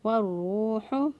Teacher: والروح، ہا کو وسط حلق سے ادا کیا، گلے کے درمیان والے حصے سے ادا کیا